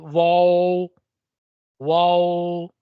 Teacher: जब हम वाव कहते हैं तो यह दोनों होठों को गोल करने से उसकी गोलाई की आवाज से निकलता है।